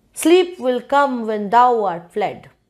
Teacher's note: You want to put stress on the word sleep.